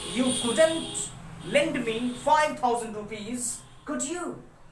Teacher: We can use this rising intonation in a question or request.